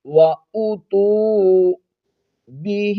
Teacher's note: حمزہ پر پیش ہے، اس کو آپ نے نہیں کھینچنا، وَأُو آگے تا پر جو پیش ہے اس کے بعد واو حرف مدہ ہے، اس کو ہم نے کھینچنا ہے